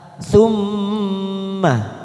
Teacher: masuk pada huruf mim yang bertasdid, 3 harokat kita tekan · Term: bacaan gunnah